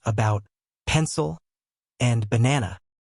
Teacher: Notice how the unstressed syllables have a neutral, relaxed sound. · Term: schwa sound